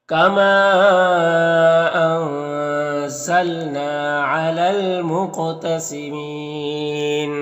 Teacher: क़ाफ़ को पुर पढ़ेंगे, ये हुरूफ मुस्तालिया में से है और क़ाफ़ में कलकला भी करेंगे